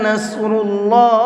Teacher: صاد کو مبھر کے پڑھیں گے اور اللہ کے لام کو بھی مبھر کے پڑھیں گے، اس لیے کہ اللہ کے لام سے پہلے پیش ہے اور اللہ کے لام سے پہلے پیش ہوتا ہے تو اس اللہ کے لام کو بھی مبھر کے پڑھتے ہیں۔